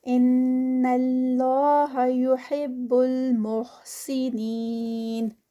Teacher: ان پر غنہ. اللہ لفظ جلالہ heavy 2 counts کا اسٹریچ. یحب المحسنین نین پر 4 counts یا مد اسٹاپ پر.